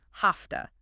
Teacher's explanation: have to is a classic reducer because the V in have is voiced but the T in to is voiceless. V often becomes voiceless too, sounding like an F. So have to becomes have toa.